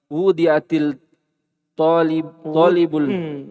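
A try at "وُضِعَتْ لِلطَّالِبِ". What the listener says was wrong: Kenapa antum baca ti? Tidak ketemu dua sukun. Kan dibaca ti itu kode komatis sholah. Karena ketemu dua sukun.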